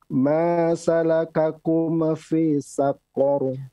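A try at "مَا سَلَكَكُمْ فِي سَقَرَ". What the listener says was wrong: Ya, mimnya afwan jangan dipantulkan pada dat ya.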